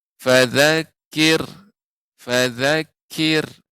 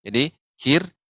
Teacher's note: Jadi kir dibaca dengan tipis, ra sukun sebelumnya kasrah. Kir tidak kir.